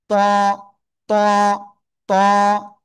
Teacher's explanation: জিহ্বার আগা উপরে দুই দাঁতের গোড়ায় লাগান, লাগিয়ে মোটা আওয়াজে পড়বো আমরা।